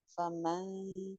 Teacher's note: اب اس کو فمن نہیں کر رہی میں، فمن. میری زبان نون کے مخرج کے انتہائی قریب ہے، انتہائی قریب ہے، اور بہت ہی سافٹلی اس کو ٹچ کر رہی ہے. اس کو میں زور سے نہیں لگا رہی اور نہ ہی میں اس کو بہت زیادہ فاصلے پہ رکھ رہی ہوں. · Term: اخفا